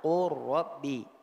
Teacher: Kemudian yang kedelapan huruf lam. Dia ketika sukun hanya didghamkan pada huruf lam, tapi pada riwayat yang kita baca kalau ketemu ra juga dia menjadi idgham